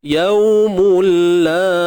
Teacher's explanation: bacaan lunak, bacaan lembut. Sifat lin. Waw mati sebelumnya baris atas.